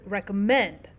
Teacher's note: We also have the word recommend where we have the stressed syllable at the end.